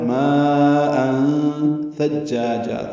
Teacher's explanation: ہے، الف مدہ کے بعد حمزہ آنے کی وجہ سے، اور تنوین کے بعد ثا آنے کی وجہ سے اخفا ہے ، ماء ثجاجا، ثا کو جیم سے ملائیں گے نرمی سے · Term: مد متصل